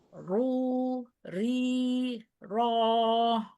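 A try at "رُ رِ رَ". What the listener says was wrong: Belum. Harokat kasrahnya belum. Masih miring. Bukan ri. Tapi ri.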